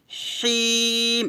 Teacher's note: র র বলতে হবে মোটা করে রহিম হবে না কিন্তু আবার হি বলতে হবে হিম হাটা গলার মাঝখান থেকে চিকন করে বলতে হবে